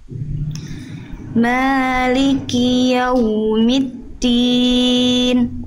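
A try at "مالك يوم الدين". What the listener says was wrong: Bagus, hati-hati dan din, jangan tin. Maliki yaumiddin. Mal dal tadi ya agak becek dikit.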